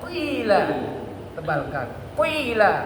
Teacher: Bonyongkan. Qila agak condong ya, artinya ditebalkan.